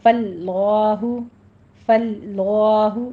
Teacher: فاللہ، فاللہ لا کو پر پڑھنا ہے، لفظ جلالہ کو، ٹھیک ہے، فل کو لام باریک پڑھا جائے گا، لا کو پر کرنا ہے آپ نے